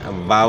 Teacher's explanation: واو کی ادائیگی میں ناتمام ہونٹ جو ہے نا گول ہوں گے